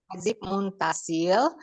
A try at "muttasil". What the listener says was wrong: Muttasil pakai tasdid ta. Muttasil.